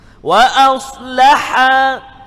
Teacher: Ha kat tengah. Tengah hakum kita ni. Tengah kerongkong kita.